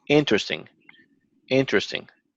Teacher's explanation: we're stressing the first syllable